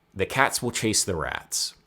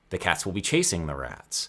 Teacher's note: In all three of these examples, in my native Maryland accent, there is relatively the same amount of time between the stressed syllables, and then I just kind of crammed in the unstressed syllables where I could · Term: stress-timed language